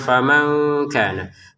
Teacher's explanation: Faman nun sukun bertemu kaf ya, maka kita baca dengan samar